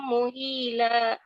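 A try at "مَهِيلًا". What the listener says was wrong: Mahila bukan mu.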